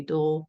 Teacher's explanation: schwa sound is in between the b and the l not after